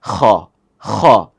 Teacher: এই যে হালকা একটু ভাইব্রেট হচ্ছে, এটাই খ।